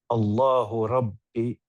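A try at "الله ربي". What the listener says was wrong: Attention, c'est un med. Rabbi. C'est un med ici. Med bilia. Rabbi.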